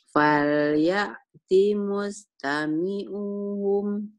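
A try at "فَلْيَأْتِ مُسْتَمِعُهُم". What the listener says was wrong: Pendek. Fal ya'ti mustami'uhum. Nggak ada yang panjang ya Bu ya.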